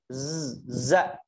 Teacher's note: lebih tepatnya kalau untuk za ini desir suaranya harus keluar